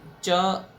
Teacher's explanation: ચ બોલીએ ત્યારે આપણી જીભ તાળવા ઉપર સીધી સ્પર્શ કરે છે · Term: તાલવ્ય